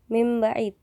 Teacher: Contoh, min ba'id yang berubah ketika melafalkannya menjadi mim ba'id, yang mana ba telah mempengaruhi suara nun, huruf sebelumnya, dan berubahlah nun menjadi mim, dan itu untuk menyerupai ba pada makhraj safataniyah. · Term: Asimilasi regresif